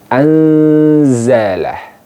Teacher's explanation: Jadi nun sukunnya disamarkan ke huruf zai. Anzala, bukan angzalah tapi anzala. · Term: ikhfa